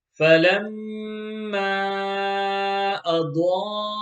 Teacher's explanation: In box number 7, the first word has a gunna and a mud, and the second word has a mud